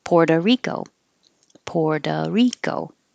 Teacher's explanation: a lot of the times the o at the end will change to an uh because we're connecting it to rico so puerto rico you don't even hear the oh poor doe